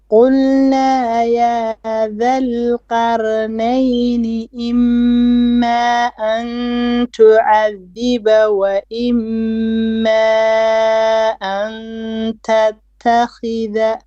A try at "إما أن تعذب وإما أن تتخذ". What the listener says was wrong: Okay, you can't stop with التخذ. You have to say التخذ if you are going to stop. Also, you missed the mad إما. There's 4 beats there.